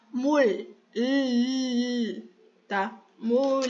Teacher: tentando fazer som de L batendo a língua na gengiva